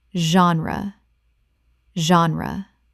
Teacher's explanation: 2 syllables. The G makes a Z sound, and the E is not pronounced at the end.